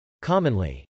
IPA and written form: kˈɑmənli (commonly)